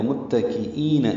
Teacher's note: میم اور تا، کاف، حمزہ، یا، نون سب باریک پڑھے جانے والے حروف ہیں۔ میم کو تا سے ملانا ہے، تا باریک پتلا پڑا جائے گا۔ متکئین، ای حمزہ یا کی شکل میں ہے اور یہ یا مدہ ہے، آگے یا ساکن سے پہلے حمزہ کے نیچے زیر آئی ہے۔